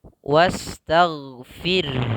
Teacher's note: Karena sebelum huruf ra itu sukun ada huruf kasrah. Maka ketika ra sebelumnya kasrah wajib dibaca dengan tipis. Maka kemudian ha-nya juga harus kelihatan, jangan wastaghfir tapi ha-nya nggak ada kelihatan.